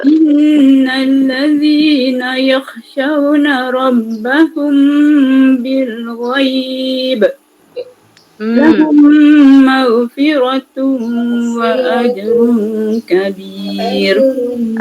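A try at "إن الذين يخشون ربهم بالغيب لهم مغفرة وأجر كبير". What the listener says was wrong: Cuma cantikkan lagi kha tu ya. Bagi tebal sikit. Mesti muncung. Tapi untuk permulaan boleh muncung lah untuk menjadikan dia tapi sebenarnya yang tepatnya dia masam.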